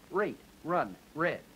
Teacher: The R of rate is the kind of R that begins a word, fully voiced.